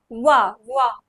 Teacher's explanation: जिसमें दांत और ओष्ठ दोनों का प्रयोग होगा तो उसे वहां से निकलेगा व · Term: दंत ओष्ठ वर्ग